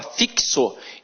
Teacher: então o X tem som de KS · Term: dífono